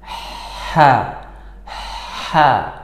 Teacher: keluarkan getaran dari pita suara sedikit Ha ha ha di belakangnya jadi ada getaran suara dari pita suara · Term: huruf H